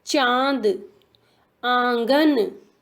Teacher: अनुनासिक, इसका उच्चारण नाक और गले दोनों से होता है।